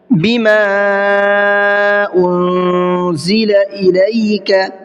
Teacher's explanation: मद्दे मुनफसिल का मतलब होता है इसको 1 से 3 अलिफ की बराबर खींच करके पढ़ना होता है, यानी थोड़ा सा ज़्यादा खींचना होता है।